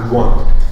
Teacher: Très spécial est le cas de la nasalisation de O, qui combine l'évolution normale du O qui diphtongue et devient oué avec la nasalisation. Et donc on dira loin.